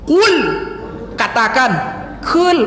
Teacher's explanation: Qaf tuh jangan sampai tipis.